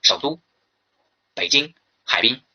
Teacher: 那么如果说赏声和非赏声相连的话呢，是前边一个赏声呢变成半赏